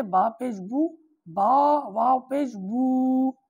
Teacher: جیسے با پیش بو، با واو پیش بو، یعنی جب واو ساکن ہو اور واو سے پہلے پیش ہو تو واو مدہ ہو جاتا ہے، یعنی پھر واو کو 1 الف یعنی 2 حرکات کے برابر کھینچ کے پڑھیں گے۔ اگر خالی با واو پیش بو پڑھ دیا تو یہ تلفظ غلط ہو جائے گا، اس سے معنی بگڑ جائیں گے۔